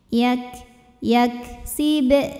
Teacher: untuk Kaf yang sukun maka hamsnya keluarnya belakangan anginnya sifat anginnya keluarnya belakangan setelah suaranya